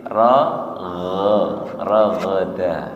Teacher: gho tenggorokan atas nggih bukan ha